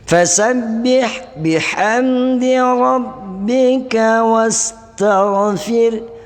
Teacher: ini ra ini tipis karena didahului oleh baris di bawah